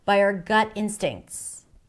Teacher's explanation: And 'by our' is connected, is reduced because that's the less important part